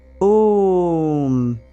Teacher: When you open your mouth, make it round like you're going to say O. The M at the end should hum like a distant bell.